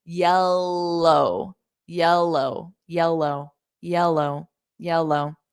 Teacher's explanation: But when you say yell, like yell, just when you say the L, go low, yellow. Because you need to hear the L on low as well. So you need the L on both sides of the word.